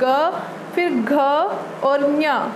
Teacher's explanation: कंपन होता है, अंदर ही एक कंपन सुनाई देता है, तो उसको ही हम सघोष बोलते हैं।